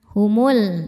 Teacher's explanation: Nah, ini alif lamnya alif lam qamariah. Karena alif lam menghadapi huruf qamariah yaitu mim, maka lam dibaca jelas.